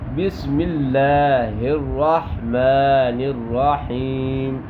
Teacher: لام باریک ہوگا لفظ اللہ کا